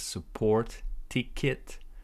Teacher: support ticket, stress in the first syllable.